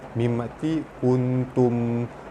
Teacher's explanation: mim mati bertemu dengan sad, hukum dia izhar syafawi, dibaca terang jelas tanpa dengung.